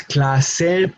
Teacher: The emphasis in this case should be in the second to last syllable, clase.